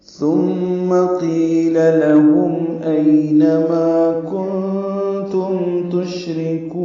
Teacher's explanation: ثا کو نرمی سے ادا کریں گے اور میم مشدت پہ غنہ ہے.